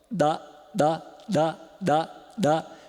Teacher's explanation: fecha a glote abaixa a laringe E desfaz a oclusão